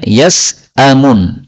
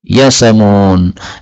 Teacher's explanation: hamzahnya dihilangkan, maka harakatnya hamzah dipindah ke huruf sin menjadi yasamun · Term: bacaan naql